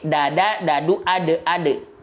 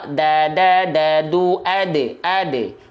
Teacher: melafalkan huruf D pada abjad alfabet itu ujung lidah ke langit-langit. Bukan ujung lidah ke pangkal gigi seri atas.